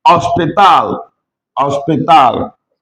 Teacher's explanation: Remember you don't pronounce H when you start that word in Spanish.